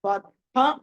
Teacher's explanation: తర్వాత కామేశ బద్ధ, బద్ధాలో దాకి కింద హా ఉంటుంది. దా అన్నది అల్ప ప్రాణం, హా అన్నది మహాప్రాణం, కాబట్టి బద్ధ అని పలకాలి.